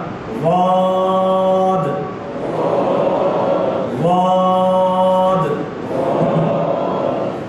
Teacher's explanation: چاہے زبان کی کروٹ کو دائیں طرف لے دیں چاہے بائیں طرف, لیکن بائیں طرف آسانی سے ادا ہوگا. ذرا اس طریقے سے کر کے اور ہونٹوں کو نہ ہلنے دیجیے گا.